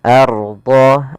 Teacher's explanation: apabila ada huruf ra sukun didahului dengan harakat fathah, maka dia tebal ra-nya. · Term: ra tafkhim